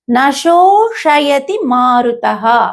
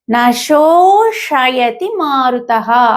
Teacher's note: అంటే మెలిక శ వచ్చింది, దాన్నే ఇక్కడ తాళవ్య ష అంటారు. తర్వాత వెంటనే షా వచ్చింది, దాన్ని మూర్ధన్య షా అంటాం. కాబట్టి ఆ రెండు కరెక్ట్గా క్లియర్గా వినిపించాలి.